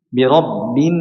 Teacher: Nun musyaddad ini Jelaskan yang lama yang lama ya minimal dua harakat